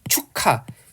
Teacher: 돼서 발음이 됩니다 이런 것들을 우리가 의문의 축약이 하죠 보세요 축하 기역 키 만나서 키 하나로 축약되고 있고요